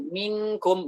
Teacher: Minkum, bukan miakum. Kalau miakum, itu masih jauh dia. Jauh dari makhraj kaf. Kita dekatkan lagi, jadi minkum, seperti itu.